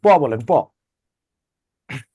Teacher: প এর উচ্চারণে আপনি বাতাসকে পুরোটা আটকায় দিচ্ছেন, তাই না? দুই ঠোঁটে।